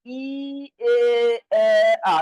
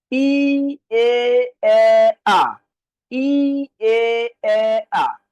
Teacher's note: যখন উচ্চারণ করতেছেন, ই বললে জিহ্বাটা উপরে থাকতেছে, এ বললে একটু নিচে নামে, এ বললে আরেকটু নিচে নামে, আ বললে একদম নিচে নামে।